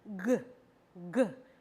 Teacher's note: the back of the tongue goes up and towards the velum - or the soft palate there good good and your vocal